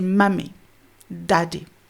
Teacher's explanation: ils coupent la première syllabe après le m. Et après le d. Oui, de sorte à ce que ça termine sur la consonne, en fait. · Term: structure syllabique fermée